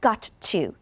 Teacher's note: you want to just pronounce the T one time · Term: linking